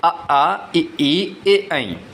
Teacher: ऐसे स्वर जिनका उच्चारण करते समय ओष्ठ गोल नहीं होते हैं अपितु फैल जाते हैं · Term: अवृत्ताकार